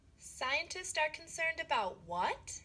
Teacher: Ngữ điệu đi lên ở about what.